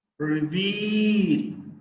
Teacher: reveal the second syllable is stressed